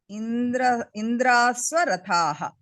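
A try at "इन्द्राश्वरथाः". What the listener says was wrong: Indrashwarathaha. Shva. Sakaram nasti. Sha.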